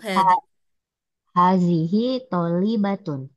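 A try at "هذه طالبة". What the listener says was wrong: Hadihi. Hanya dipanjangin sedikit. Hadihi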